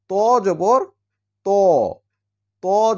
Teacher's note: ত হচ্ছে জিহ্বার আগাটা উপরের দাঁতের গোড়ার সঙ্গে লাগবে সামনের উপরে সামনের দিককার দাঁতের গোড়াতে লাগিয়ে উচ্চারণ করতে হবে ত